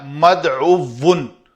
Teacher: دعوی لفظ ہے، مادہ ہے دعوتن، اس سے ہم جب اسم المفعول کے وزن پر ایک کلمہ بنایا تو وہ بنا مدعوون۔ تو مدعوون میں اس واو ساکن کو دوسری واو کے اندر ادغام کر کے اس کو ہم نے مشدد کر دیا، تو یہ لفظ بن گیا مدعوون۔